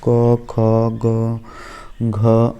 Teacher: इनके उच्चारण में कंठ का स्पर्श होता है